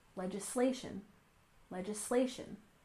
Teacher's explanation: And finally, we have legislation, with stress on the third syllable.